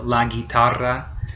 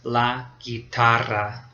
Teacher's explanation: And the last one is the RR. The double R is probably the most difficult sound in Spanish for English speakers to make. It's a tongue roll.